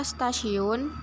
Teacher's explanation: kita ambil bunyi Hai biasanya bunyi t diucapkan secara apikodental tetapi dalam kata stasiun pengucapan bunyi t dilakukan secara laminoalveolar dikarenakan bunyi es sebelumnya yang juga diucapkan secara laminoalveolar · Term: asimilasi progresif